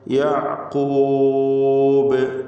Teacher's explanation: ഖൽഖല കുബ്ര നൽകി ശബ്ദം വളരെ വ്യക്തമായി ചലിപ്പിച്ച ഹറക്കത്ത് പോലെ കേൾപ്പിച്ചുകൊണ്ട് വഖഫ് ചെയ്യുക